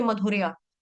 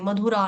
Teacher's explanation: या इसका उच्चारण स्पष्ट रूप से या होना चाहिए, आ नहीं होना चाहिए, मधुरा नहीं होना चाहिए, मधुरा नहीं है।